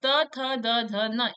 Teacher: त वर्ग का जो उच्चारण स्थान है वो दंत से होता है